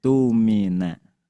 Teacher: alifnya dibaca u, hamzahnya ganti dengan wawu jadi tumina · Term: panjang 2 harokat